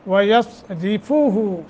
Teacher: وَيَصْرِفُهُ صاد موٹا، را باریک